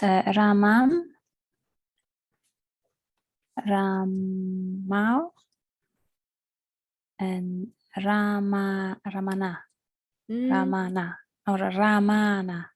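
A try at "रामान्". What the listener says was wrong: No, it's a virama there. So the first one, Ramam, Ramau, Raman. So you just stop on the nakara, right? Because you have the virama there.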